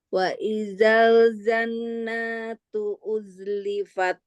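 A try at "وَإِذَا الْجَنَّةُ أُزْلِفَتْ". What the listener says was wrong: Jangan diituin, Bu. Jangan dipanjangin, nggak ada yang panjang itu. Tapi ditahan, guna musadadah. Masih panjang. Wa idzal jannatu uzlifat.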